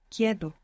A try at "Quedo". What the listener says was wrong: The E doesn't split here, but good for trying. Quedo.